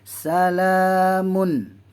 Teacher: Izhar halki. Tak boleh dengung. Mun. Jelas. Terang.